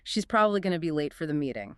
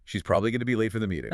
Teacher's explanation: the crucial information probably late meeting is carried by those stressed content words